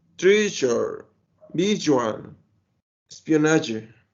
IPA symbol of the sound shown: ʒ